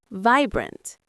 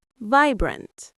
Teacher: The I sound is long like in ice.